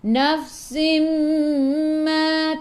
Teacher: Ingat sifat huruf fa pun hamas. Sifat huruf fa hamas, jadi kena ada angin. Nafsim ma. Tanwin tak sama, selepasnya ada mim, di atas mim ada sabdu.